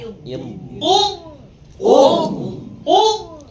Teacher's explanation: di tepi lidah tidak pakai ujung lidah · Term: huruf dad